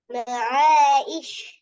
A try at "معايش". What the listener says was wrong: இஷ் அல்ல, ஈ வரப்படாது, அலிஃப் வரக்கூடாது, யா தான் வரணும். معايش ஈ.